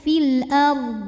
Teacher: huruf dad harus tetap terbaca ya fil ARD tapi jangan sampai memantul